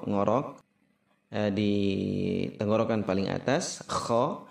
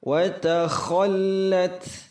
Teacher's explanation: kha ngorok di tenggorokan paling atas, kha. Wa takhallat, ngorok di tenggorokan paling atas, lam tasydid, kemudian ta ta'nis hamas.